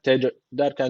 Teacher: cim harfi cezim almış. Burada kalkale tecviti var. Birazcık vurguluyoruz.